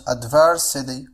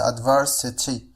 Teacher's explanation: فهنا T سوف تصبح D. هذا ما يسمى في اللغة الإنجليزية بالفلاب T. فالفلاب T بمعنى إذا جاءت T بين two vowels فهي تنطق على الشكل D.